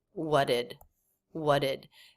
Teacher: guys pretty unclear there I've done a video on what did when we say these two words together we often drop the T